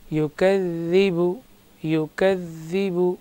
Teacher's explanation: ذال میں بالکل سختی نہیں ہوگی، نرمی کے ساتھ اور بغیر کہیں کھینچے